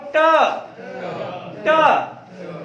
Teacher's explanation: जब हम कहेंगे ट तो देखो जीभ जो है पलट जाती है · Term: मूर्धा